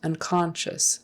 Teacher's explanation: accent is on the second syllable